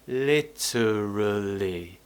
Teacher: we don't really do much with the mouth we keep the tongue kind of in the middle of the mouth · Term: schwa sound